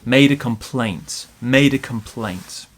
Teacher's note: small stress on made big stress on complaints